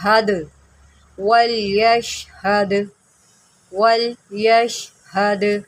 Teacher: next پڑھتے ہیں ولیشہد، دال حروف قلقلہ میں سے ہے اور یہ اس وقت ساکنہ ہے، جب دال ساکنہ ہوتی ہے تو اس کے اوپر خوب قلقلہ کرتے ہیں، یعنی کہ دال کو ہلا کر پڑھیں گے